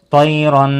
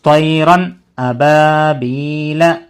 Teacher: نون کی آواز کو ناک میں نہیں چھپانا، طیرن ایسا نہیں پڑھنا، طیرن ابابیل، اسی کو اظہار کہتے ہیں۔